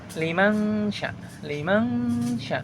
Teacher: suara nun sukunnya itu didengungkan kepada suara sya liman sya liman sya didengungkan. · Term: ikhfa